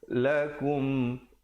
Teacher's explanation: izhar syafawi, bunyi saja kum terus masuk